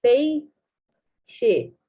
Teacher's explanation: É um ditongo. A gente tem uma vogal e uma semivogal na mesma sílaba.